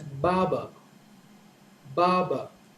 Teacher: So the stress is on the first syllable, ba, and the stress on the second syllable is a little lower.